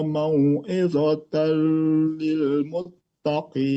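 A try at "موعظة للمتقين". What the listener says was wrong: Ajo, untuk mau'izatal itu idgham bila gunnah, jadi mau'idhatal lil muttaqin. Hati-hati terbaca dengung atau dilamakan di situ, hati-hati. Mau'idhatal, nah itu dihindari supaya dibaca cepat. Mau'idhatal lil muttaqin.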